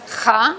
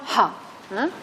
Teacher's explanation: Por tanto, está invocando la energía femenina y la primera cuestión desde el punto de vista articulatorio es que esta aspirada inicial no es ja, es una aspirada ha, similar a la inglesa, por ejemplo, de Helen. Es una aspiración suave, no es ja de Jaén, sino ha.